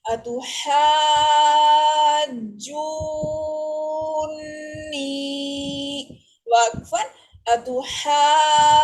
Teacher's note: نون چونکہ مشدد ہے اس کے اوپر ہم غنہ بھی کر رہے ہیں